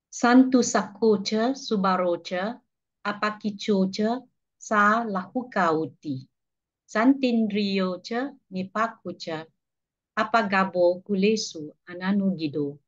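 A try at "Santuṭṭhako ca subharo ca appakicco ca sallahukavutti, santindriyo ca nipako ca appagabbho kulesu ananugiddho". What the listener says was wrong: Great.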